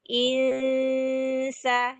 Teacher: Lalu insa ada ikhfa. mensamarkan bunyi nun menuju huruf sin